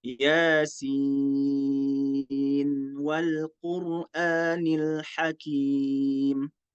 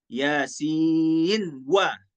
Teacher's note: Izhar tanpa mengidghamkan ke huruf waw.